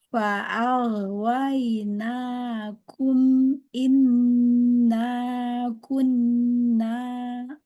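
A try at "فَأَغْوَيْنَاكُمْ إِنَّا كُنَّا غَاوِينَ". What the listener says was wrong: Umi hati-hati ya, linnya jangan dihentak. Fa'aghwaynakum, tidak waina, enggak ya, wainakum.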